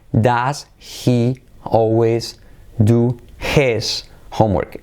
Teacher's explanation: De ese his comemos la I, la hacemos como una E y nos comemos la H.